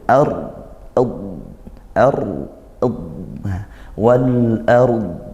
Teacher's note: kalau kita wakaf maka rnya sukun dod sukun. Harus disempurnakan dua-duanya gak boleh baca wal ard. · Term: ro sukun